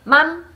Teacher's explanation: 맘 하고 짧게 m을 유지시켜 주지 않고 맘 하고 끝내면 어 밥 하는 말과 분간할 수 없게 들린대요. 외국인들 귀에는. 그래서 맘 밥 이게 같게 들린다고 합니다.